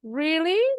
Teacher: kalau really sama dengan what, intonasinya naik.